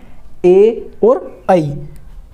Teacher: कंठ प्लस तालु से बोले जाते हैं।